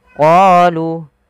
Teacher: panjangkan huruf qa 2 harakat karena pada lafal qa ada bacaan mad tabi'i, yaitu ditandai dengan huruf qa yang bertemu alif setelahnya.